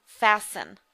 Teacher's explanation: remember we do not pronounce the T on that word fasten